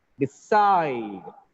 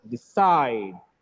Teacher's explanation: D is weaker here. Side is stronger.